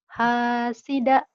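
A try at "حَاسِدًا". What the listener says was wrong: Hasidan gitu. Kalau di hasida itu kalau dihentikan hasida. Dua patah dibaca satu jika dihentikan. Hasidan.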